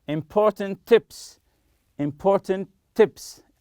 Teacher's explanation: if it's one s the second example important tips important tips as if it's one t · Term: link the sounds